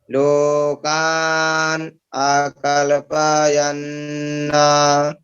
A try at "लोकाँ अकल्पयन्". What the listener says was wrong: न का उच्चारण नहीं करना, यहाँ चंद्र बिंदु है, नासिकानुस्वारस्य, है ना। लोकां, ऐसे नासिकानुस्वारस्य, है ना। लोकां अकल्पयन्, ठीक है।